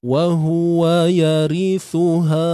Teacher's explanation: Ri ni nipis saja, ra baris bawah. Kemudian thu muncung bibir dan keluarkan sedikit hujung lidah.